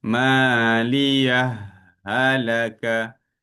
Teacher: kalau dia idgham, dia masuk pada huruf ha, dia terus keluar pada ha yang kedua. Okey, dia tak ada, dia masuk pada ha yang kedua terus dan keluar pun pada ha yang kedua.